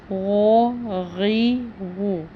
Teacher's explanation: غین کو پر پڑھا جاتا ہے، یعنی کہ موٹی آواز کے ساتھ پڑھا جاتا ہے، موٹی آواز ادا کرنی پڑتی ہے، اس لیے اس کے تلفظ پہ بھی دھیان دینا ہے۔